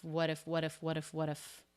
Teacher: what's happening there with the T it's a flap isn't it he's linking the two words of the flap T it comes between two vowels